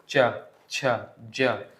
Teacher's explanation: इनको बोलने के लिए थोड़ी ज्यादा आवाज घिसते हुए निकलती है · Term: स्पर्श संघर्षी व्यंजन